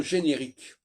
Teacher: dans générique, qui est une transmutation de genre, il n'y a plus le en. Le en est décomposé.